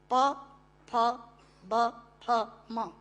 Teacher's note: प फ ब फ म दोनों होंठ मिलाकर बोले जा सकते हैं। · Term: ओष्ठांग